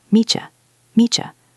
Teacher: I'll meet you there. The T in meet and the Y in you create that CH sound again.